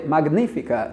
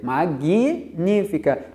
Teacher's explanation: Tem um sonzinho do i ali na linguagem coloquial.